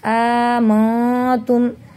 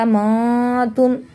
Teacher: نون ساکن کے بعد حروف اخفا میں سے تا آ رہا ہے، اس لیے ان کو ہم ناک میں چھپا کر پڑھ رہے ہیں